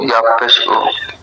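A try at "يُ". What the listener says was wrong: হ্যাঁ, ইয়াব পেশ উ না, ইয়াব পেশ ইউ।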